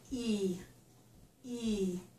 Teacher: The tip is down, but the front is up. So the front part of my tongue is high in my mouth for E. E. The tip is down behind my teeth. · The tip is down behind my teeth. The front is going to be raised a bit in my mouth. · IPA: / i /